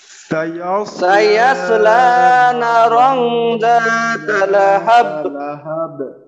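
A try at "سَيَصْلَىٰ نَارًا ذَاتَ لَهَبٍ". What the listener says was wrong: হ্যাঁ নারং যেন নারং না হয়, টান যেন বাদ না যায়, এটা খেয়াল রাখতে হবে কিন্তু।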